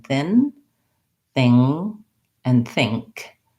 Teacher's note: But that's what I wanted to highlight here in the difference between thin, thing, and think. My tongue is doing 3 different things, and there's 3 different groups of sounds: the N sound, NG, and NG and K sound.